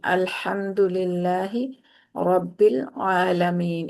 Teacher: हा और ऐन की जरा थोड़ी और मेहनत करें कि इनको वस्ते हल्क से अदा करें